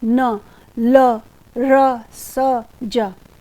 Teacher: जीभ की नोक है उसके तालू के अंतिम भाग और मसूड़ों को दोनों को स्पर्श करेगी न ल र स ज तो यह वर्ष व्यंजन की श्रेणी